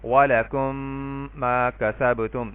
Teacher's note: پہلی میم کو میں نے دوسری میم میں مرج کر دیا ہے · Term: ادغام شفوی بالغنہ